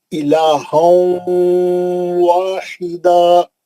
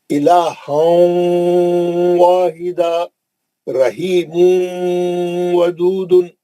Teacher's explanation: تنوین کے بعد واو آئیں گا یا نون ساکن کے بعد واو آئیں گا، سیدھا واو میں چلے جائیں گے، نون کو لے کے واو میں جائیں گے اور غننے سے پڑھیں گے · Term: ادغام مع الغنہ